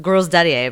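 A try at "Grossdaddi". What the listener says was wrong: Except the more and more you say it, the more and more it sounds like you're saying girl's daddy. Gross daddy.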